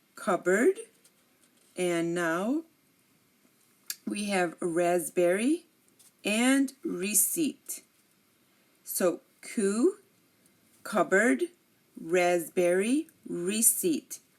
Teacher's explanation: If you notice, I did not pronounce this P in any of these words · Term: silent P